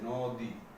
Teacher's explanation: নয়ের সাথে যে ওটা ছিল সেটা উচ্চারণ হয়ে যাচ্ছে ওকার হয়ে যাচ্ছে